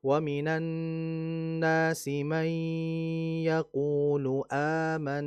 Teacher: kalau kita menggunakan Hafs ini kan, maka mad badal ini dibaca 2 harokat.